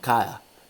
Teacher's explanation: es una realización aproximante de la oclusiva D